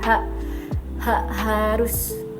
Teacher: konsonan yang dihasilkan dengan pita suara terbuka lebar. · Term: bunyi laringal